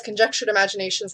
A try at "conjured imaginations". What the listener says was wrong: Conjured imaginations. No, you said conjectured.